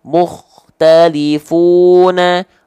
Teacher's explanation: Kho sukun yang didahului oleh huruf berharokat dhammah vokal u, maka dia juga tetap dibaca dengan ketebalan yang sempurna.